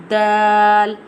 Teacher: Dal pronounced from the tip of the tongue touching the roots of the top two front teeth